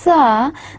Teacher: But on the other hand, sounds like sa, they do not, their glottis is open, the vocal cords are not at all vibrating, so in such case you do not feel any vibration. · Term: voiceless sound